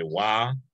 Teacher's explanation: In Marshall Islands, we say wa, which is, just a elongated A instead of broken A with the glottal stop